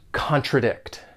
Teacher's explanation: When pronouncing this verb, it has 3 syllables and the stress is on that 3rd syllable